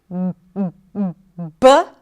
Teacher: And there is the B, which is the voiced consonant. So the air comes out. The vocal cords are vibrating, b, and the air is released.